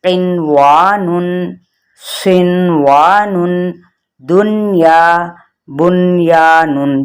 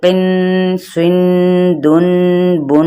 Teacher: جہاں پہ ادغام نہیں ہوگا، بھلے ہی اس کے اندر نون ساکن آ رہا ہے، بلکہ وہاں پر اظہار ہوگا